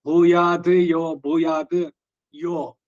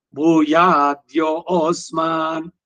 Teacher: ಎರಡು ಸೇರಿದಾಗ ತಕಾರ ಪ್ಲಸ್ ಯೋ ಬಂತಲ್ಲ ಅದೇ ದಕಾರ ಬರುತ್ತೆ